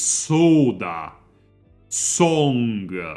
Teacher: you have the open o not the close o it's Soda song it's a very open mouth o so like